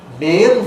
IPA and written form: meːn (mane)